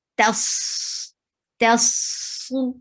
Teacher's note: don't make ta heavy. It's only the sod which is heavy. Tas, tas, and circle your lips for sod.